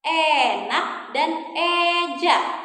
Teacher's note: kita ya punya bunyi vokal E. Madya, atas, depan.